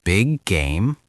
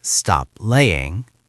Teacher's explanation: >> It's smoother and faster. You don't repeat the consonant, you glide over it.